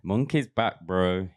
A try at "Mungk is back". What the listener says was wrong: Mungk. It sounds like you're saying monkey's back.